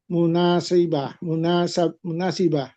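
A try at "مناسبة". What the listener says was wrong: Itu fathah, Pak. Munasabah. Munasabati.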